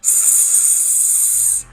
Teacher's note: it's alveolar, meaning it's pronounced by the tip of your tongue touching on the ridge of your front teeth